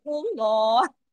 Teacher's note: اگر ہم یہاں رکے ہیں، عارضی سکون کیا ہے، تو ہم نے صرف ہاں تک پڑھنا ہے، اللہ. ہاں کو اپنے گلے میں پڑھ کے دکھانا ہے، ہاں کو اسکپ نہیں کرنا